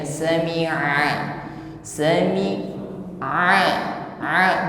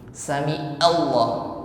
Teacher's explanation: penekanan pada huruf Ain menekan pada wasatul halqi tenggorokan bagian tengah bunyinya lunak saja